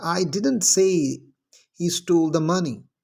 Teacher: अब यहाँ पर जो हमने स्ट्रेस किया है वो किस पे है, डिडंट पे है